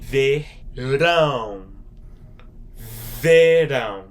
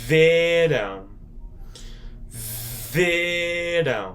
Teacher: there's an accent on top of that A up there because of that nasally sound. It makes it more like an O sound